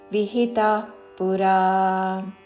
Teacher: విసర్గ తర్వాత ప తో పదం మొదలైనది కాబట్టి శ్వాస వదులుతూ చివరిన ప లాగా ఉచ్చారణ